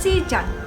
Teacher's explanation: Perkataan siang disebut dan ditulis sebagai sijang dalam bentuk permukaan, iaitu fonem J disisipkan di antara vokal tinggi E dan A, menyebabkan ia disebut sebagai sijang, bukan siang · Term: penyisipan geluncuran J